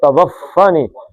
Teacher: ہونٹوں سے تھوڑی سی ہوا نکلے گی کیونکہ اس کا مخرج کیا ہے؟ اف. اس کا مخرج بھی ہونٹ ہے.